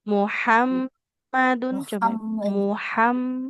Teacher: Jadi huruf H itu di tengah tenggorok kan tempat keluarnya.